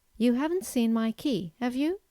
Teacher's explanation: the first usage of a question tag is to formulate a simple yes no question but in this case you have to use a rising intonation